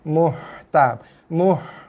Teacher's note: Perhatikan bunyi dia berangin bunyi ha pedas. Muh, bukan je bunyi muh.